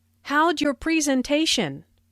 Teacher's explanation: Notice the contraction for how did sounds like howj and your sounds like your.